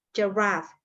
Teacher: Again, ini emang pakai sound, tapi karena ini bukan pada posisi syllable yang ditekankan, makanya soundnya berubah menjadi swa